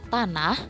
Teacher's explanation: Lalu ada plosive alveolar, terdapat bunyi T